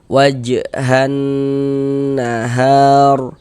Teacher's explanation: Jadi cara membacanya itu dari ha dari ha ini ya langsung masuk ke huruf syamsiyah ini huruf nunnya ini. Jadi huruf lamnya ini langsung dilewati karena di sini enggak ada tanda bacanya kayak gitu. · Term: alif lam syamsiyah